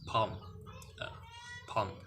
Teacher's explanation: It is a fully open vowel sounds, and it is produced with unrounded lips. It is therefore the low back unrounded vowel.